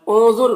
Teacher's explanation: نون کی آواز کو ناک میں چھپا کر پڑھیں گے، ضا کو پر پڑھیں گے، حروف مستعلیہ میں سے ہے، را کو بھی پر پڑھیں گے۔ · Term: اخفا